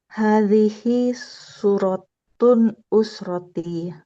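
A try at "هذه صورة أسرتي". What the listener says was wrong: Tidak bertanwin ya. Suratunya tidak bertanwin Ukhti karena dia bersambung dengan usroti. Jadi, suratu usroti.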